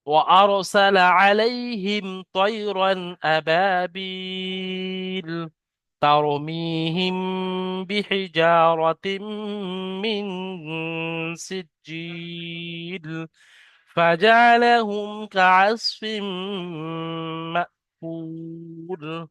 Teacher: এখানে জিম ইয়াজের জি, এখানেও তাই ইয়ায় মাদ্দার পরে থামতে হচ্ছে, এখানেও তাই ওয়াও মাদ্দার পরে থামতে হচ্ছে। এগুলো সব শেষের গুলো 3 আলিফ 4 আলিফ করে টান দিয়ে পড়তে হবে, মাদ্দা আরজি ওয়াকফি হওয়ার কারণে।